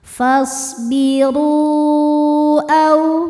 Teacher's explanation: kita panjangkan boleh empat boleh lima harakat · Mad tabi'inya adalah waw sukun yang sebelumnya dhammah pada kata pertama yaitu fasbiru, sedangkan hamzahnya adalah a pada kata kedua yaitu au. Maka ro-nya ini kita panjangkan, boleh 4 boleh 5 harokat. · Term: mad jaiz munfasil